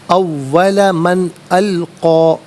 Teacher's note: من میں نون ساکن کے بعد حرف حلقی حمزہ آ رہا ہے تو نون ساکن کو اظہار کے ساتھ پڑھیں گے، اخفا یا غنہ نہیں کیا جائے گا۔ اول من القا، آئیے یہاں وقف پڑھیں گے تو القا ہی پڑھیں گے۔